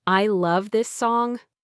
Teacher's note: your voice might rise on this and then rise again at the very end, making it a question